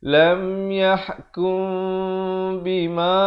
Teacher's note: mim mati bertemu ba, bibirnya itu hampir bersentuhan sahaja ataupun sekadar bersentuhan dengan kadar 2 harakat. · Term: ikhfa syafawi